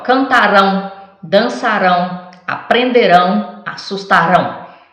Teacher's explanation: todos são verbos que a última sílaba que é forte né indica o tempo futuro